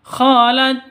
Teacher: Hames jadi harus ada desisnya dikit ya harus ada nafas yang keluar dari mulut